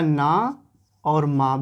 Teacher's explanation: ना और माँ भी नासिक से निकलता है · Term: नासिक व्यंजन